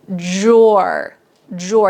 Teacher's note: Now, the D, you can say drawer, drawer, a little bit of a D, but it often just sounds like a J. So if this word is really tricky for you, just think of J-O-R, drawer, drawer.